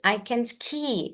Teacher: ski is the important information. So, it is stressed.